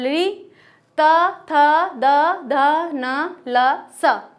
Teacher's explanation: हमारी जीभ का जो आगे वाला भाग है वो दांतों को स्पर्श करता है, इसलिए ये दंत इनका उच्चारण स्थान कहा जाएगा।